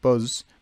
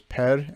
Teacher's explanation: The z sound shifted to an r sound in Chuvash